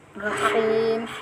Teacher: Jadi semua ro yang berharokat fathah itu hukum bacaannya tafkhim, harus tebal. Jadi bukan ro tapi ro agak ditebalkan ya, diangkat pangkal lidahnya. Rahim. Him ini dia punya sifat hamas juga ya.